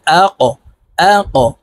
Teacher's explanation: কফ কলকলার হরফ উপরের দিকে ধাবিত করে ধাক্কা দিয়ে উচ্চারণ করব